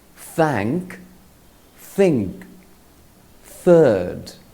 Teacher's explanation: The sound of th is voiceless or soft and has no vibration in the vocal cords. To say it, place the tip of the tongue between the teeth, then blow air through the sides of your top teeth.